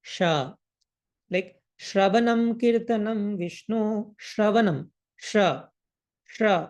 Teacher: the talasha will be pronounced by by the touch of tongue and the pallet or tal so the pronunciation will be sha like shanam sh sh okay